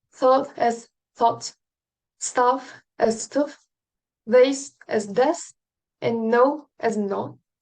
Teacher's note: typically long vowels being shortened and diphthongs being pronounced as monophthongs